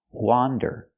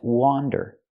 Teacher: That's wander, with the open sound, like hot and stop.